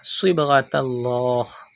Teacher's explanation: Pronounce sad with thicker voice because it is from mustaliya letters, and do qalqala in ba because ba is from qalqala letters.